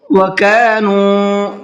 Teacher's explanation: نون کو کھینچنا ہے، اس لیے کہ یہاں پر واو مدہ کا قاعدہ ہے، واو ساکن ہے اور اس سے پہلے پیش ہے